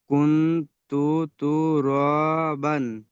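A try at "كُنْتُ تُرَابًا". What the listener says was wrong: মাশাআল্লাহ, খুব সুন্দর হচ্ছে।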